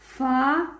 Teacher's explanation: اوپر کے دانتوں کے کنارے اور نیچے کے ہونٹوں کی تری والے حصے سے